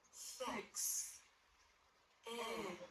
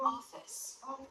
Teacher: Notice that the jaw is more dropped for the stressed syllable. For the unstressed I, the jaw is less dropped.